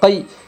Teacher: غی، فا یا زبر فی، یا لین ہوگا، یا ساکن سے پہلے زبر ہے اس لیے یا لین ہوگا، یا لین کو نرم آواز کے ساتھ جلدی اور معروف پڑھے